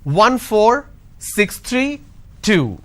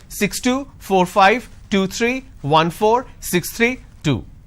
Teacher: the moment I say 2, it's dropping, that means it's end of the series. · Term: drop tone